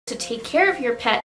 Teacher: vocês não precisam pronunciar esse T tão fortemente, porque aqui no caso a gente pode fazer um stop T